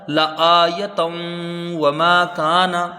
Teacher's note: تاکہ اوپر دو زبر کی تنوین ہے، تنوین کے بعد حروف یرملون کا واو ہے، تو ادغام غنہ کے ساتھ ہوگا۔